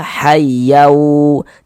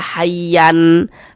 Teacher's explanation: Yang dimasukkan itu apanya? Bunyi tanwinnya dimasukkan ke huruf wau. · Kemudian didengungkan, dighunahkan. Jadi di bagian yaunya itu kita tahan suaranya sejenak, kita panjangkan sepanjang dua harakat. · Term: idgham bighunah